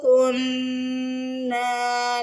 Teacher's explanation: نون پہ دیکھیے تشدید آ رہی ہے تو نون پہ غنہ ہوگا